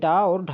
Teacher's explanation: जो आपके डा और ढा है तो इन्हें उत्क्षिप्त व्यंजन कहा जाता है